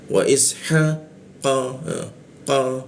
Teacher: cara membaca qo itu bibirnya a dia a tapi keluarnya itu o e wa isha qo qo keluarnya o tapi mulutnya a qo seperti itu ya ini mesti dilatih cara membacanya Karena ee aksen Indonesia itu lebih keara O dia O karena ada O ya.